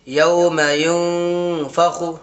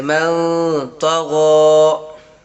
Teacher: نون کی آواز کو ناک میں چھپا کر پڑھیں گے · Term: اخفا